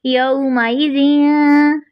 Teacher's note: फिर आगे देखते हैं, इस पर एक कायदा भी लग रहा है, 3 चीज़ें इकट्ठी हो गई हैं, एक तो ज़ाल नरमी से, दूसरा ज़ेर की अदायगी मजहूल नहीं होने देनी हमने, ठीक है, और तीसरा तनवीन जो 2 ज़ेर है, ठीक है, उसमें के बाद हरफ ता आ रहा है तो बारीक इख्फा भी होगा